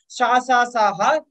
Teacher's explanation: संघर्षी व्यंजन वो जिनके उच्चारण में हमारे मुख में किसी प्रकार का संघर्ष होता है या ऊष्मा निकलती है, इन्हें संघर्षी व्यंजन बोलते हैं।